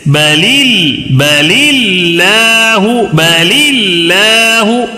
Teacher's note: اللہ کے لام سے پہلے زیر ہو تو باریک پڑھیں گے.